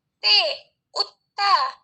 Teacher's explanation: Dan fonem T ini tempat artikulasinya alveolar. Alveolar itu belakang gigi atau punggung gigi.